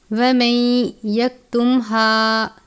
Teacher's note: موٹے والا ہا ہے، حلق کے آخر سے یا سینے کے بیچ سے ادا کرتے ہیں۔ الف سے پہلے زبر ہے الف مدہ۔